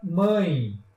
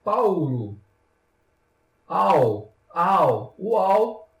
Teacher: é aquele que o ar ele se divide tanto pela boca quanto pelo nariz na hora da fala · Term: nasal